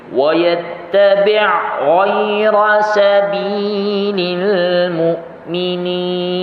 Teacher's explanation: ain tu mati kan. Dia bukan bermaksud itu qalqalah, bukan. Tapi bila mati dia bunyinya tu lebih kuat. Kerana sakinah kan, kerana huruf itu mati.